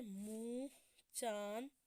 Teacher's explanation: अब है इसका उच्चारण नाक और गला दोनों से होता है। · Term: अनुनासिक